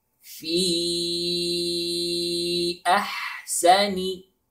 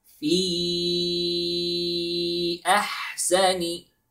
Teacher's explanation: Notice here we have 4 seconds, and the name of this hukum called mad munfasil.